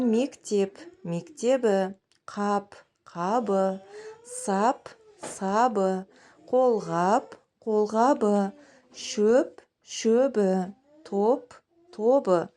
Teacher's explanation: П-ның өзгеру себебі П-дан кейін Ы немесе Э деген дауысты дыбыс келіп тұр, сондықтан П дыбысы Б дыбысына өзгерді.